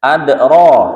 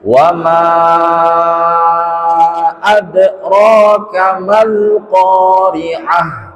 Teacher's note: ingat huruf ro-nya tebal dan 2 harokat atau 1 ayunan juga. Ro kamal, langsung.